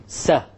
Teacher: There's a little bit gap between the tip and the actual gums. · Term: Sin